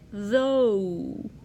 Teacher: In English, when we say oh, we're actually making two different vowel sounds. We start with o, and then we go to oo